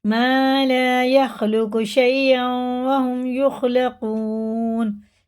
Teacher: ادغام واو ہے، غنہ کر کے پڑھیں گے